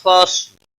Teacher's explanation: صاد حروف مستعلیہ میں سے پر پڑا جائے گا. اس پر قلقلہ نہیں ہونا چاہیے